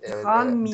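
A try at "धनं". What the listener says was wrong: Дханам. Дханам. Нет такого дхам. Это вы все превращаете в однослоговую... Это вы все превращаете в однослоговую мантру.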